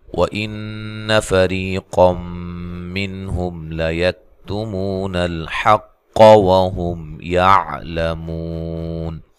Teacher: واو کو ادا کرتے ہوئے ہونٹوں کو گول کرنا ہے۔